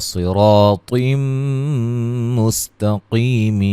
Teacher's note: قاف کو موٹا ادا کریں گے، نون مشدد پہ غنہ ہے، نی یا مدہ ہے، مد اصلی ہے یا مدہ، را کو موٹا، اور یہاں مد جائز ہو رہی ہے، مد اصلی ہے، صاد کو موٹا ادا کریں گے، را کو موٹا ادا کریں گے